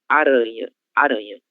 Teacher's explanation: E a nossa letra R, entre duas vogais, e quando ela aparecer sozinha, ela terá o som vibrante, que é o som que vocês conhecem também da língua espanhola, o som R, aranha, aranha, ok?